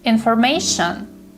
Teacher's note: The stress is on the 3rd syllable. It's not information, it's information.